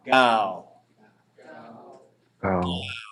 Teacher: Now we're looking for a rounded, open ending. That means it's going to end with a vowel and a W.